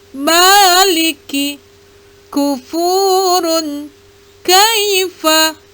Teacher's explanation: pada pangkal lidah agak ke muka sedikit dan langit-langit atas, yaitu huruf kaf. Baik berharakat hidup, yaitu fathah, kasroh, dan dhammah, maupun berharakat mati ataupun sukun.